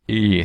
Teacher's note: So in Thai there's a vowel that's a lot like our /u/ vowel except the lips are spread rather than rounded to produce an /ɯ/ sound